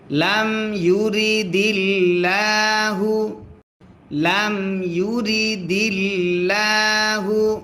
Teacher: আল্লাহ শব্দের লামের ডাইনে জের যদি হয় আল্লাহ শব্দের লাম তখন পাতলা করে পড়তে হয়